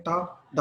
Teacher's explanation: दांतों के पिछला जो हिस्सा है वहां आप जबान लगा के हवा रोकते हैं, टा डा, और प्लोसिव साउंड पैदा करते हैं। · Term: एल्व्यूलर स्टॉप्स